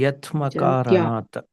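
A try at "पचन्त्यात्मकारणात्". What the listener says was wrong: Not Yatma, Atma Karanat. Pachanti Atma Karanat.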